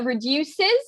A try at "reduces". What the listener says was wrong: i think you miss the s at the end reduces